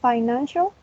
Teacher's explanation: It has 3 syllables, and the stress is in the second syllable.